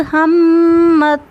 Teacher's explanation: मीम मुशद्दद है, यहाँ पे गुन्ना करेंगे, नाक में आवाज़ लेकर जाएंगे।